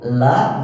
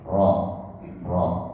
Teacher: nekuk Iya nekuk karena memang cara membacanya seperti itu la nekuk ujungnya kena ke langit-langit atas la sedangkan ro tidak kena ke langit atas tapi dia lebih bersentuhan ke dasar bawah ro ro tapi ujungnya hanya menyentuh sedikit nyentil langit atas kemudian